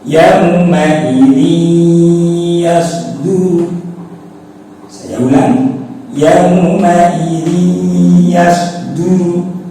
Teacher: ini ada kasratain bertemu huruf ya, maka harus dibaca dengung